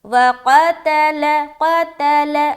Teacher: قاف کو موٹا، لیکن تا میں جیسے پہنچیں گے آواز باریک ہو جائے گی